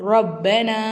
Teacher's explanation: ஜபர் வச்ச இந்த ராவை நல்லா வல்லினமாக வச்சிருக்கணும். ரா அப்படி சொல்லணும்.